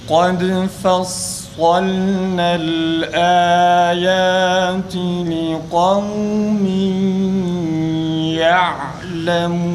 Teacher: fa'nın ince okunuşundan hemen sonra sadın kalın a şeklinde okunması lazım. Bir de darın kalkalesi tam çıksın.